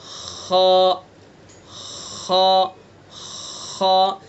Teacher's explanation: खा का मखरज है अदनाए हल्क, यानी हल्क का मुंह की तरफ वाला हिस्सा। खा को भी हलक से ही अदा करना है, लेकिन इसको मुंह की तरफ से अदा करना है।